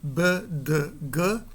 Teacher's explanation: exemplos de palavras que contém sons oclusivos sonoros. B, D, G. E as letras correspondentes são beta, delta e gama.